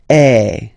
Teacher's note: you combine this uh vowel a with the vowel e okay you will get the sound e so really open E